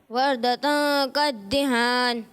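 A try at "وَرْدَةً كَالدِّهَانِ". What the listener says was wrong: کدیہان نہیں، پھر سے آپ نے کدیہان پڑھا. وردتن کدیہان.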